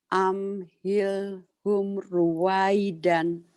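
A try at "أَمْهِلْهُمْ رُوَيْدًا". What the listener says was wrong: Humnya jangan sepet ya, Bu, ya. Amhilhum. Amhilhum ruwaidan. Jangan sepet. Amhilhum ruwaidan gitu. Jangan buru-buru ya, jangan digeser. itu jangan digesrek apa jangan diseret, diangkat kakinya.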